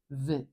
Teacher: think about it like an F but you want to add the vibration down at your throat